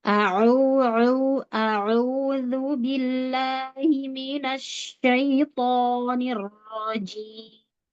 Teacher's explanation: Huruf ain ya, ditekan katup tenggorokannya.